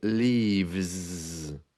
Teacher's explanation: you can hear the that the S becomes almost like a zed